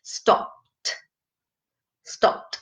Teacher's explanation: Então não sai aquele sopro do P